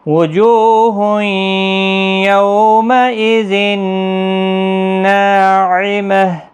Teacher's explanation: ہا ساکن پڑھا جائے گا وقف کی صورت میں